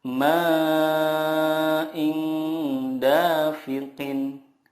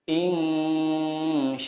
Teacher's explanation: cara membacanya adalah menyamarkan nun sukun dan disertai gunnah 2-3 harokat. Yang dimaksud dengan menyamarkan di sini adalah ketika kita mendengungkan atau menyamarkan nun sukun itu, lidah kita sudah siap ke huruf berikutnya. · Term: ikhfa hakiki